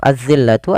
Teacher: Kemudian pada lafal az-zillatu ada alif lam syamsiyah, yaitu alif lam yang kita tulis tapi kita tidak baca. Langsung ditasydidkan atau diidghamkan ke huruf zal